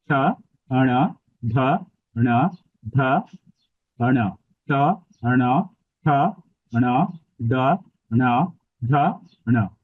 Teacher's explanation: আমার জিওবাটা ঠিক মুদ্ধাতে টাচ করছে এবং পাশাপাশি আমার নাসিকাতেও উচ্চারণটা হচ্ছে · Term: মূর্ধন্য ন